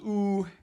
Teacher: in the high-back region the good vowel is ooh